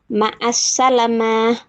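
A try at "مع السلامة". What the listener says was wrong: Boleh dipanjangin lagi Ummu yang bagian ma'assalamah. Lanya panjang ya. Ma'assalamah.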